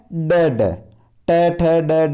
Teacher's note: मूर्धन्य व्यंजन जिनका उच्चारण स्थान मूर्धा है